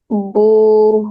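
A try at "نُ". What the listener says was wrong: Not boo, it's not ba, it's noon.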